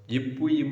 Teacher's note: மேல் உதடும் கீழ் உதடும் பொருந்த இவ் எழுத்துக்கள் வந்து பிறக்கும்